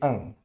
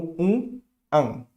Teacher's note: Boca aberta, an, nasal, ok?